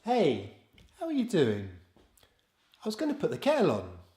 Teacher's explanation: Quite often British speakers will replace unstressed words with the schwa.